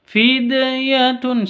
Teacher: Kalau ada dal sukunnya ada di tengah berarti qalqalah sugro. Harus dipantulkan ke hurufnya.